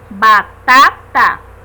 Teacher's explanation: percebemos através da pronúncia que a sílaba mais forte da palavra batata é a segunda